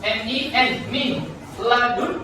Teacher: Jadi contohnya itu langsung masuk ke huruf setelahnya. Jadi nun sukunnya itu tidak perlu diucapkan. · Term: tanpa dengung